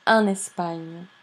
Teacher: When the previous word, and especially if the previous word it's a preposition, and it ends in consonant or S, and the next word starts with vowel, there is this linking that makes the whole thing sound like one unit. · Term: enchaînement or liaison